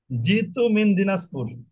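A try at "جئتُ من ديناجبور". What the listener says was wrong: মাশাল্লাহ, মাশাল্লাহ, এই তো ঠিক আছে।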